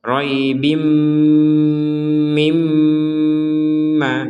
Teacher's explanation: tanwin bertemu mim, diperkuat dengan adanya tasydid, maka kita membacanya dengung · jadi ini dua kali dengungnya. Pertama tanwin bertemu mim, yang kedua mimnya ada tasydid, ya, mim yang bertasydid dengan dengungnya.